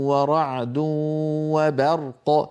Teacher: الباء هنا جاورت الراء والقاف المفخمتان الراء مفخمه والقاف مفخمه والباء لا يصح ان تتفخم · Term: ترقيق الباء